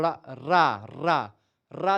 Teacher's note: इनके उच्चारण के लिए जीभ की नोक को तालु के अंतिम छोर तथा मसूड़े यानी वर्त्स को छूना पड़ता है, जैसे कि आप देखते हैं रा रा रा रा, देखे रा बोलेंगे तो यहाँ पर जीभ आपकी नाचते हुए जाकर के आगे के मसूड़े पर ऊपर वाले पर टच करेगी, रा ला। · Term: वर्त्स व्यंजन